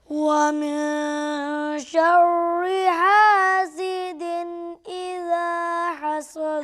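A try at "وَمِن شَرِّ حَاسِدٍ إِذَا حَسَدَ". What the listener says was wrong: हा को अच्छे से अदा कीजिए। वमिन शर्रि हासिदिन इज़ा हसद।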